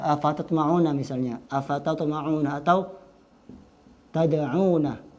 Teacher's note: Ta, dal, ta itu satu makhraj. Ujung lisan ke pangkal gigi seri atas.